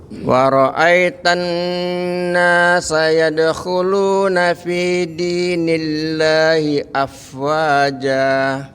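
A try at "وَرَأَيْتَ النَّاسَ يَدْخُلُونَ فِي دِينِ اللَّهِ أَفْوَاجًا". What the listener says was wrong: Baik, coba Pak, ai-nya itu dipanjangin.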